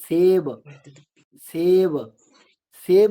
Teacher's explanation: एक होता है दंत्य सकार। जब जीभा का स्पर्श दांत से होता है। जैसे हम कहते हैं सेब सेब सेब में जो सकार है उसमें जी्हा जो है वो दांत को स्पर्श करती है।